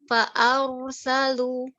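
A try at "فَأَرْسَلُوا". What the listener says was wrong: Lu-nya Bu masih menebal satunya ya. Fa'arsalu. Lu tipis, coba lu-nya.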